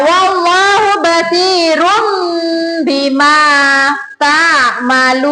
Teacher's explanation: mengubah suara N menjadi M atau iklab